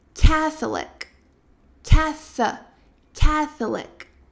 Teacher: Mas, na verdade, a sílaba tônica, ela é a primeira.